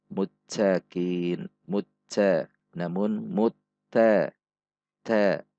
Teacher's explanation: Ada sedikit dorongan udara saat mengucapkannya, namun tidak boleh terlalu banyak atau sampai berubah menjadi huruf C. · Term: huruf ta